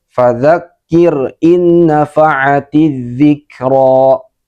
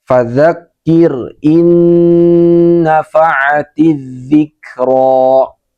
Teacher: Nah, dia itu tidak ditahan ya, juga tidak didengungkan. Padahal dia harus di tahan dan harus didengungkan. Harus masuk ke hidung dengungnya. Seperti ini contoh bacaan yang benar. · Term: idgham bighuna